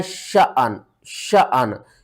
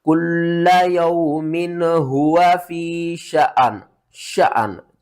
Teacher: وقف کی صورت میں نون کے نیچے 2 جو زیر ہیں یہ بھی ختم ہو جائے گی, نون جسٹ ساکن ہو جائے گی